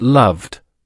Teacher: If the base verb ends in a voiced sound, then the ed ending will also be voiced and we pronounce it as. So for a verb like love, which ends with the voiced v sound, the past tense becomes loved, pronounced loved.